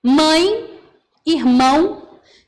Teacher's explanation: a gente não está pronunciando E, a gente não está pronunciando O, a gente está pronunciando o I e o U. Percebe que são semivogais.